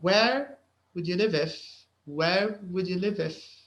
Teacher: you have the v from live and you have the i from if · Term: consonant vowel linking